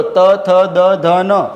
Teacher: એટલે એવા વ્યંજનો બરાબર કે તમે જ્યારે એનું ઉચ્ચારણ કરો છો તમારી જીભ છે એ દાંતે સ્પર્શે છે માટે એને કહેવાય છે દંત્ય અથવા ત વર્ગના વ્યંજનો તો બોલો ત થ દ ધ ન